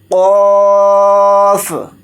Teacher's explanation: اس کو بڑا قوف بولتے ہیں، اس کو موٹا یعنی پر پڑھنا ہوتا ہے